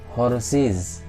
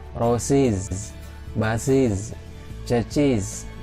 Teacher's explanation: kalau bunyinya sibilan sebelum suffixnya maka diucapkannya sebagai allomorph is